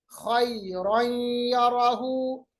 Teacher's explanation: दो जबर को या के साथ मिलाया, इसमें हमने इदगाम किया, मिलाया, उस साथ साथ में जो आवाज है नून की वो खशूम में चली गई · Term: इदगाम बागुन्ना